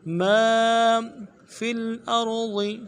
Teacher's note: لفظ ما میں میم کے بعد الف مدہ ہے، ایک الف مدار میں کھینچیں گے۔ ما فی الارض فا کو لام کے ساتھ ملانا ہے اور حمزہ کو را کے ساتھ ملانا ہے، را کو موٹا کرنا ہے، ضاد کے زیر کو نرمی سے ادا کرنا ہے اور لفظ ضاد کو موٹا کرنا ہے۔